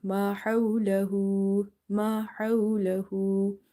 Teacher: Lam fatha la, haw inverted dhamma. So this will be stretch up to 1 alif.